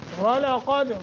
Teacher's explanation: واو کو موٹا، قاف کو موٹا، دال پہ قلقلہ